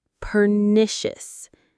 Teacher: Per-ni-shis, pernicious. The stress is on the second syllable, ni, pernicious.